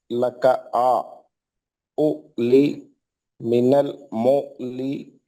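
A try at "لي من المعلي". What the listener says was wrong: عین میں نہیں جا رہے نا، خالی الف کے الف بڑا ہے، عین چھوڑ غائب ہے. لی من المعلی، عین ظاہر کریے، عین کو ہائی لائٹ کریے.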